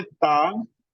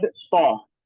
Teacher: ता is recited with empty mouth and this तौ is recited with the full mouth